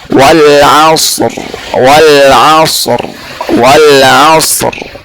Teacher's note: Ini keadaan yang ketiga untuk ra yang mufakham. Wal asr, aslinya wal asri, tapi karena kita sukunkan maka hukumnya jadi tafkhim karena ra sukun dan sebelumnya sukun dan bukan huruf ya.